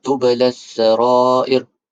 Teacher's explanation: Dia alif lam yang mana lam dia tidak perlu dibaca. Maksudnya tublas sarair. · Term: alif lam syamsiah